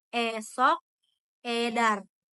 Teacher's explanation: Usai umbi di sini ada E. Huruf vokal ini sudut bibir itu direntangkan ke samping sehingga bentuknya melebar sama seperti vokal I